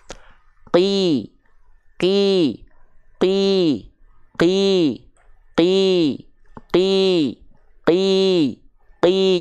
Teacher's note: tidak mengalirkan hembusan angin atau nafas ketika kita lafalkan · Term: jahar